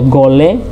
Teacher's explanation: Lalu ini misalnya gole, ya, gole, ini dibaca gole, bukan dibaca goleh, ya, bukan dibaca goleh, seolah-olah bunyi h di sini